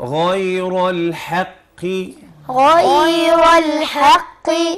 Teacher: القاف مفخمة مفخمة بس مكسورة أقل درجات التفخيم